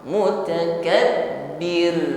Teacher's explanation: rnya takrir ya tetap bergetar namun getaranya tipis karena sebelum RO di sini ada harakat kasrah